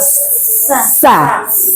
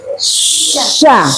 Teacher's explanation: Nah, kemudian ini juga sifatnya sama safir ya, Bu ya. Sa harus ada angin seperti suara ular. Sa. Nah, kalau yang sya anginnya menyebar banyak Bu.